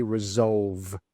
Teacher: Now make sure that when you say that V sound, you voice that sound. So your throat should vibrate, okay? Resolve with that V sound.